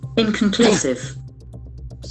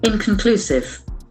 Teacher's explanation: There are four syllables. Inconclusive. The accent falls on the third syllable.